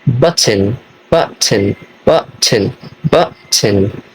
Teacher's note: The T sound is a glottal stop. The sound is made by briefly stopping the airflow in by the throat.